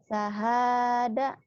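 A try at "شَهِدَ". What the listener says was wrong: Shin. Syahada.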